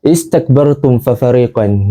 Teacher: Di mana izhar syafawi ni membawa maksud menyebut huruf mim dengan jelas tanpa dengung. Apabila ia bertemu dengan mana-mana huruf selain daripada huruf mim dan juga huruf ba.